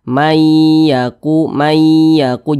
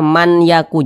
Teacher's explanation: Jadi bunyi nun sukun ini langsung masuk ke huruf ya. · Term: disertai dengan dengungan